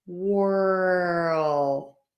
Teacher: that earl is quick because I'm moving from puckered lips all the way through to square tense and then pulled back for that L · So I can get that really square shape for my lips. But if I start with a W and my lips are very rounded for that W, I have to really pull my lips back into that square tense shape